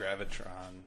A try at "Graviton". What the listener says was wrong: Graviton. not Tron. It's Ton.